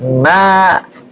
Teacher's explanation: Jangan keluar dari hidung tapi keluarnya dari aljauf.